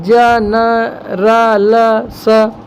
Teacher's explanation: जिह्वा का अग्रभाग या नोक के द्वारा दांतों व मसूड़ों के पास उभरे खुरदरे भाग से उच्चारित होने वाले व्यंजन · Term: वर्ष व्यंजन